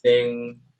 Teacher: the velar plosive will not be pronounced